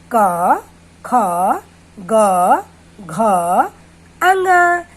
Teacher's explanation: अब देखिए, आप अपने गले पर हाथ रखिए और बोलिए क, ख, ग, घ, अंग। तो इसमें हमारी जीभ का जो पिछला भाग है वो हमारे गले को टच कर रहा है, इसलिए इसको हम क वर्ग बोलते हैं।